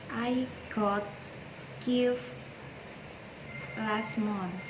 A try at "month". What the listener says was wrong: Oke, very good. Bukan mon tapi man.